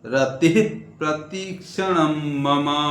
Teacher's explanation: ये विसर्ग है आगे पकार है इसको ये विसर्ग को रतिह ऐसे नहीं बोलना है उसको आधा बोलना है